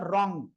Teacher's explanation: আরো একবার একটু ইকফাটা ক্লিয়ার করি যেহেতু ইকফা মাত্র একবারই বলেছি ইকফা এর অর্থ গোপন করে পড়া নাকের ভিতরে নিয়ে গুন্না হবে গুন্নাটা হবে অনুস্বারের মত